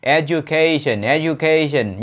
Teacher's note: Nhấn vào âm tiết thứ ba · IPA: / edʒ.əˈkeɪ.ʃᵊn /